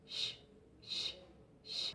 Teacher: Es palatal, se usa la lengua y el paladar. Además es africado, se produce una oclusión y después una fricación. Es sordo, no vibran las cuerdas vocales y todo el aire pasa por la boca.